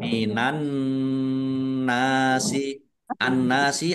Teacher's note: nun tasdid dibaca ghunah atau mendengung ditahan ya kira-kira dua harakat biar tampak dengungannya